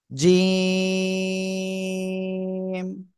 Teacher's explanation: শক্ত করে উচ্চারণ করতে হবে, জিহ্বার মধ্যকান উপরে তালুর সাথে লাগিয়ে।